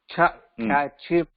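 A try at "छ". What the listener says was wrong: அந்த second cha கொஞ்சம் அழுத்தி சொல்லணும். செகண்ட் cha கொஞ்சம் அழுத்தி சொல்லணும்.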